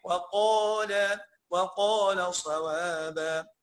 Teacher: يبقى الواو، الواو ملهاش دعوة، الواو ملهاش دعوة بالصاد. الصاد قاعدة يعني زي ما هي بقوتها وفخامتها وكبريائها زي ما هي، لكن الواو فقيرة إلى الله وضعيفة جدا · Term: حروف الترقيق